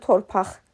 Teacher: Torpaq sözü torpaq, q x səsini ifadə edir